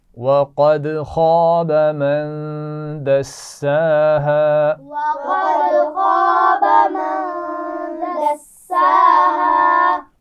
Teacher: قد قاف کو موٹا پڑھیں گے دال پر قلقلہ ہوگا